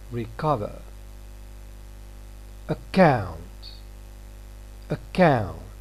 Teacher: We have got k between two vowels, but the next one is stressed, account. Here it's going to be aspirated. So in this context, k is going to be aspirated.